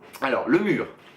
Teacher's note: Il y a le R final, qui est plus doux, et le R normal, qu'on trouve ailleurs dans le mot, et qui est plus fort.